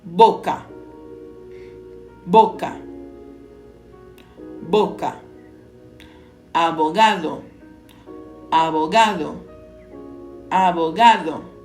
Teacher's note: no espanhol a letra B geralmente é pronunciada com menor pressão labial parecendo intermediário entre o v e o b